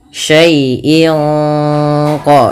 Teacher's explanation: Syai'in qadir ada bacaan ikhfa hakiki yang dimana suara tanwin pada lafal in disamarkan ke huruf qaf, yang mana qaf termasuk huruf ikhfa.